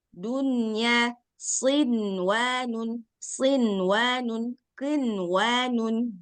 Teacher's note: suara Nun sukunnya habis dulu baru masuk ke huruf setelahnya makanya dia ada sedikit ghunah